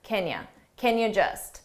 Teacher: Can in this sentence is an auxiliary verb, so we pronounce it unstressed and it sounds like can you. And you can make that unstressed too and reduce it to ya, can you just.